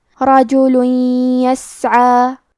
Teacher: یا حروف الادغام بغنہ میں سے ہے، تو ہم یہ حکم کو غنہ اور تشدید کے ساتھ ادا کریں گے